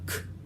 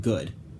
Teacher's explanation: We have a k, as in car, unvoiced, and g, as in good, voiced.